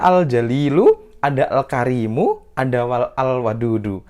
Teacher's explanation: Makanya alif lamnya terbaca dengan jelas dan dia adalah idhar qamariyah.